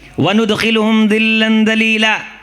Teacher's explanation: ذال کے ساتھ پڑھیں گے, دونوں دانتوں کو کھول کے درمیان میں زبان رکھ کے